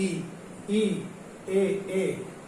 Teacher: अग्र स्वर होते हैं, यानी कि जीभ के अगले हिस्से से बोले जाते हैं